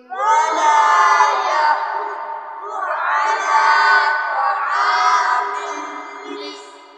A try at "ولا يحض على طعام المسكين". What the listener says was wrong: यहाँ طعام नहीं है, क्या लफ्ज है? طعام। ता के ऊपर जबर है। वला यहुद्दु अला طعام المسكين.